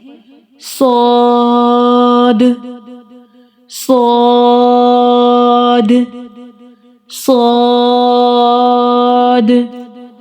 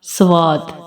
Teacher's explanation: صاد کو ادا کرتے ہوئے واو کی ساؤنڈ نہیں آنی چاہیے۔ مطلب ہم صاد ادا کریں، سواد ادا نہ کریں۔